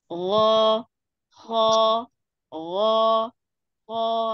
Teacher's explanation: kita memang membatasi suara itu hanya sampai di tenggorokan bagian atas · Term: gin dan koho